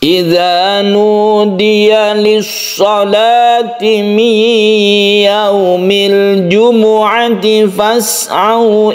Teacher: kalau sukun Ain karena dia tawasut berarti kita tidak boleh terlalu menekan huruf Ain tersebut jadi lepaskan sedikit saja ya tapi jangan terlalu banyak jadi dia itu tengah-tengah antara syidah dan rukhwat syiddah itu Ditekan